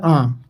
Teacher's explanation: अनुनासिक की बात करेंगे तो मुख से ज़्यादा और नाक से कम आवाज़ निकलता है